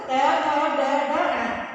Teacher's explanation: आप जब इनको पढ़कर के उच्चारण करोगे तो कि मूर्धा होता है तालु से कुछ नीचे और दांतों से कुछ ऊपर का जो भाग होता है हमारे मुख के अंदर, वो मूर्धा होता है। और जो ट वर्ग के जितने भी वर्ण हैं उनका उच्चारण मूर्धा, उसका उच्चारण स्थान मूर्धा होता है।